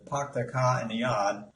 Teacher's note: people in New England states of America will pronounce words with an R without an R